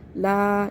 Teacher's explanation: اس کو لو نہیں کرنا ہے، لا پڑھنا ہے، باریک کرنا ہے